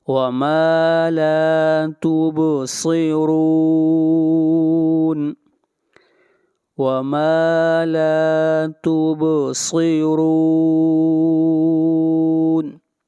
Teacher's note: صاد حروف مستعلیہ میں سے ہے اور را کو موٹا پڑھیں گے اور را کے اوپر پیش ہے۔